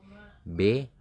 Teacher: B yaitu dihasilkan dengan menutup bibir